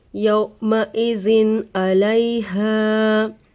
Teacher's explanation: نون کے آواز کو ظاہر کر کے بغیر غنہ کے جلد پڑھیں گے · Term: اظہار